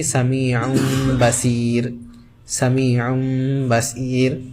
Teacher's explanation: یعنی وہ جو نون ہے وہ میم میں بدل جائے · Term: اقلاب